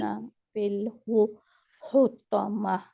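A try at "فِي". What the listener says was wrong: नहीं नहीं, गलती आपकी, फिल में आ रही है। फिल, वहां पे लाम मखरज में रहना।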